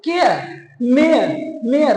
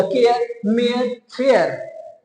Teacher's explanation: र का उच्चारण नहीं लेना है, र का उच्चारण नहीं होता है। केयर लिखा है, लेकिन आपको जो है ना, आपको लिप्स को चाटना पड़ेगा, तभी होगा।